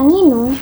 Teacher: diawali dan diakhiri bunyi sengau yaitu eng, yang jarang sekali ada di bahasa Indonesia.